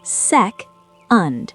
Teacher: Stress the first syllable. Sec-und. The und is super fast. Combine them.